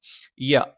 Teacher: യ നാവിന്റെ മധ്യഭാഗം മേലെ അണ്ണാക്കിലാണ്.